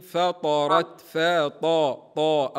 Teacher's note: الطاء اقوى الحروف العربيه مستعل ومطبقه بيني تفخيمها